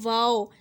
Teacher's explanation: واو ہونٹوں کو گول کرنے سے ادا ہوتا ہے. جب دونوں ہونٹوں کو آپ گول کرتے ہیں تو وہاں سے واو ادا ہوتا ہے.